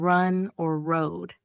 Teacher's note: I also had trouble with the R sound. Native speakers say it with a slight curl of the tongue